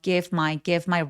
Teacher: V 발음 같은 경우는 약간 가볍게 어 f처럼 발음 처리하셔도 좋아요.